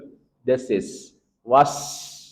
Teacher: I wa I wa kemudian masuk ke wa makhrajnya dari dua bibir yang dimonyongkan dan tarqik wa I wa i wa masuk ke shad yang punya sifat yang pertama shad itu punya sifat saofir. was ada desisnya. Kemudian dia punya sifat tafkhim tebal.